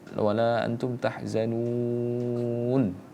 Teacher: kita panjangkan dulu madnya, kemudian kita baru munculkan huruf terakhirnya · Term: mad arid lisukun